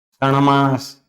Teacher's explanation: तो आधा टा है, आधा ना में बदल गया।